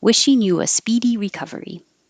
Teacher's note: Wishing you your lips get rounded and then back, and it'll make an invisible W